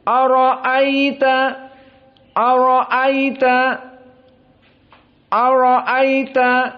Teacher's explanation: hamzahnya tidak ditashil seperti Abu Ja'far, dan hamzahnya tidak diganti dengan alif seperti Wars. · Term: bitahqiq al-hamzah